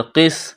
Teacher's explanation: قاف کو موٹا کرنا ہے، سین میں سیٹی کی آواز پیدا کرنی ہے۔